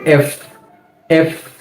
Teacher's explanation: আমাদের ওপরের দাঁতের আগা এবং নিচের ঠোঁটের পেটের মধ্যবর্তী জায়গা থেকে একটা বাতাসের মতো বের হবে